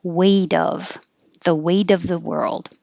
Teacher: the T will change to a D